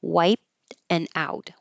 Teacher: Wipe, you hold it, you don't hear the P